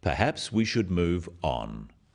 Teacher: The first one, "Perhaps we should move on," is phrased as a suggestion, but it is said in a firm way with a falling intonation at the end · This falling intonation makes it a more definite statement rather than a suggestion.